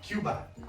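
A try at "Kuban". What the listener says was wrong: Cuban. Cuban. K-U-B. Cuban. You said Cuba. Cuban.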